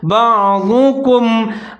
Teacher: کاف باریک ہے، ضاد کو موٹا پڑھنا ہے